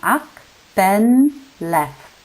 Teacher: There is also the simplification of consonant clusters in the principle of ease of pronunciation. Final consonants are dropped in act, bend, and left.